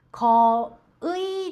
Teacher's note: 거의ではなく이と発音します。